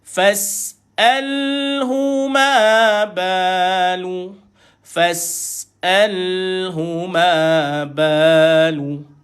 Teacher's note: Ma dua harakat. Ba dua harakat. Lu satu harakat.